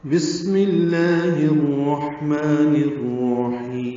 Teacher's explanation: میم مکسور یعنی زیر ہونے کی وجہ سے لام اسم جلالہ کو باریک پڑھیں گے۔ لام اسم جلالہ پر کھڑا زبر ہونے کی وجہ سے 2 حرکات لمبا کریں گے۔ · لام اسم جلالہ پر کھڑا زبر ہونے کی وجہ سے 2 حرکات لمبا کریں گے۔ ہا کو اقصی حلق سے نکالتے ہوئے لفظ الرحمن کی را سے ملائیں گے۔